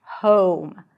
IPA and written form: hoʊm (home)